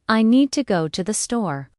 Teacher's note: The stresses on need and store while to and the are softer and faster. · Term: rhythm